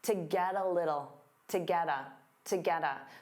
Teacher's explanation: To get a little, to get a, to get a. So to becomes that unstressed ta, get a combines together, get a, to get a, to get a.